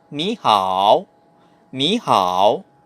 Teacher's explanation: pag magkasabay sila parehas, yung unang third tone magiging second tone, pa rising lang.